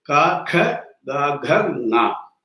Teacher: this sound is produced when the back portion of the tongue meets the soft part of the palate, just above the throat. If you see just above the throat, you will have a very soft tissue, the soft palate. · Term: Kavarga